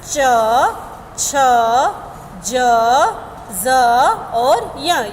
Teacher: हमारे दांतों के साइड में यह हमारी जीवा जो है वह टच होती है और जीवा का हमारा जो बीच का भाग है थोड़ा सा ऊपर की ओर अड़ता है